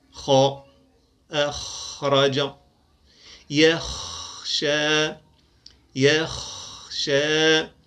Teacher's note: يصعد جذر اللسان لينطق الخاء